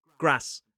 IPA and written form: græs (grass)